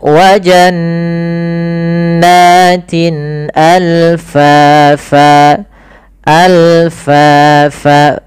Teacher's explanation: Sedangkan al-halq berkaitan dengan huruf-huruf yang kita keluarkan daripada tenggorokan. Hamzah termasuk yang kita keluarkan daripada tenggorokan kita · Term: izhar halqi